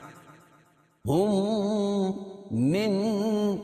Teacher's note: ہم من, اور یہ دوسری جگہ جو ہے ادغام ہوگا کیوں؟ اس لیے کہ نون ساکن کے بعد ادغام مع غنہ کے 4 حرفوں میں سے نون ہے تو یہاں غنہ کر کے پڑھیں گے · میم ساکن کے بعد میم آئے تو ادغام شفوی ہوتا ہے, یعنی میم کا میم میں ادغام ہوگا غنہ کے ساتھ.